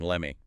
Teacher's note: The T in let drops before the M, and me reduces let me know.